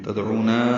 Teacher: تدعونا میں دال ساکن پہ قلقلہ بتایا ہے، او واو مدہ ہے، نا میں الف مدہ ہے اور اس کے بعد حمزہ آنے کی وجہ سے مد منفصل ہے، حمزہ دوسرے کلمے میں۔